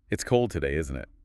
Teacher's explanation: Your voice goes down at the end, on the tag. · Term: falling tone